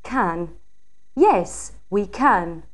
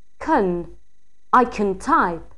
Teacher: when followed by another verb, its weak form kn is used